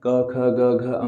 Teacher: पहला जो वर्ग है क ख ग घ अंग, यदि आप बोलेंगे तो आवाज टकराएगा कंठ पर, वहीं पर जोर जाएगा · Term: कंठ व्यंजन